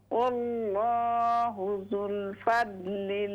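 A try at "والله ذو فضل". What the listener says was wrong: वल्लाहु ज़ू फ़ज़लिन ज़ू, यहाँ लाम नहीं है, ज़ू फ़ज़लिन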